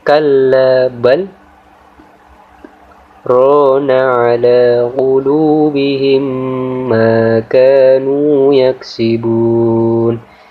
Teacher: harus berhenti sejenak tanpa mengambil nafas selama satu Alif atau dua harokat atau dua ketukan · di lafaz bal kita harus berhenti sejenak tanpa mengambil nafas selama 1 alif atau 2 harokat atau 2 ketukan, ya. Jadi dibaca bal, berhenti dulu selama 2 ketukan tapi tidak mengambil nafas, baru kemudian membaca rona ala qulubihim ila akhirih, ya. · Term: waqaf saktah, sakta